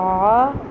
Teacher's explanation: عین کا تلفظ منہ سے نہیں ہوتا، یہ حلق سے ہوتا ہے، تو یہ حلق سے یہ ادا ہو، یعنی آ نہیں کہنا، آ کہنا۔